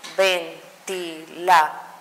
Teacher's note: En dor es que cae mi sílaba fuerte y ahí entonces sabemos que es una palabra aguda.